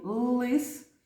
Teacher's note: у слові лис звук л звучить твердо